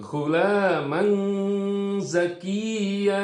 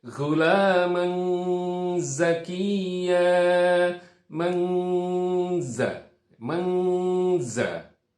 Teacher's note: jadi itu tanwin bertemu dengan zai yang harus dibaca samar. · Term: ikhfa